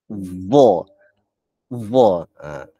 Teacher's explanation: Sebab nak membetulkan lidah, bukaan mulut, nak menjaga tebal nipis, nak kena keluarkan lidah, tambah-tambah pula huruf za ni. Za ni huruf yang lidah terkeluar sedikit, kena gigi kacip atas.